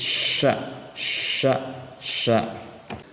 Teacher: tengah lidah renggang dengan langit bibir terbuka